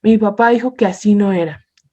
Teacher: la voz sube en la sílaba tónica de las palabras enfatizadas